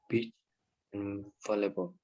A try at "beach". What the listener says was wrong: No, it's not. Beach, not bitch. Okay, beach and not bitch. Again, please. Okay, so remember it's a long vowel sound. So you need to stretch your mouth, and then maybe you can smile a little bit like E, beach.